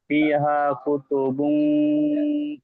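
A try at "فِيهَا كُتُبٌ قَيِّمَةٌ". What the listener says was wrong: বুম, বুম কেন জি? ইকফার গুন্না।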